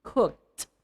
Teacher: you should say or clearly utter the ed sound of cook, which is the T